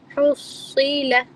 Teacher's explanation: ہا کو آپ نے حلق سے ہی ادا کرنا ہے، حلق سے وہ سٹارٹ ہوگا، ٹھیک ہے، حلق پر ختم نہیں کرنا، حلق سے سٹارٹ، آواز جو سٹارٹ ہوگی نکلنا وہ حلق کے اندر سے ہوگی.